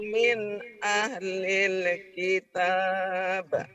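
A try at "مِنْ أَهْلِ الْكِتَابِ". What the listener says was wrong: Jangan kitabah. Min ahlil kitab. Jangan kitabah. Jangan kitabah. Kalau kitabah berarti ada barisnya. Min ahlil kitab. Min ahlil kitab. Kitab, jangan kitabah.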